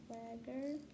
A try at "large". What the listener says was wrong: Okay, close, but let's look at this G. The G is followed by a vowel, so we know it's a soft sound. Makes the j sound. Large.